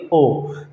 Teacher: ओ। जब आप बोलोगे ओ तो इसमें आपके होठ जो है वो भी बिल्कुल गोल हो जाएंगे, अब मतलब वो भी क्रिया करेंगे, और जो ओ की ध्वनि है वो बिल्कुल सीधे गले से बाहर आएगी, कहीं भी उसका अवरोध नहीं होगा, ना जीभ के, ना किसी मूर्धा में, ना तालु में, ठीक है। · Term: कंठोष्ठ्य स्वर